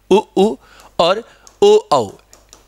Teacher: उ उ और ओ औ इनके उच्चारण में ओट वृत्ताकार आकृति बनाते हैं